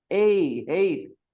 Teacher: you are actually saying two vowel sounds together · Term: diphthongs